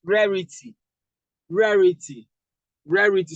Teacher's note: So we are stressing the first syllable, which is this.